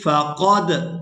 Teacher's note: یہاں دال پر قلقلہ کیا جائے گا، یعنی دال کو ادا کرتے ہوئے آواز میں حرکت یعنی جنبش پیدا ہوگی